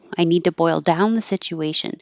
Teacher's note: boil down is a phrasal verb so the um down will be stressed